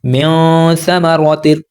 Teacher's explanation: नीचे रोक कर रखना है ज़बान को और फिर पढ़ना है म्यां। आप देखेंगे कि नून की आवाज़ नाक में छुपेगी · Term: इख्फा